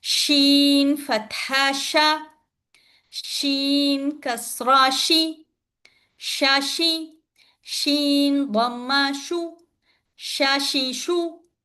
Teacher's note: Sheen. When you pronounce the sheen, you must give that tafashi sound. Okay, tafashi, that is spray sound.